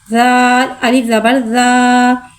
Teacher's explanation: ज़ाल नरमी वाला हुर्फ है, लिहाजा इसमें सीटी नहीं आएगी, इसको बगैर सीटी के अदा करके पढ़ेंगे। ज़ाल के ऊपर ज़बर है, ज़बर को मुँह खोल के अदा करके पढ़ेंगे।